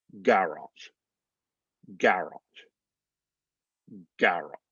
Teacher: Again, that O-R-Y is really just like T-R-E-E, tree, laboratory, laboratory. The word garage, we're stressing the second, they're stressing the first.